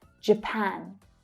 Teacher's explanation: So that's the A as in apple. Strong vowel sound in the second syllable. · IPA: /æ/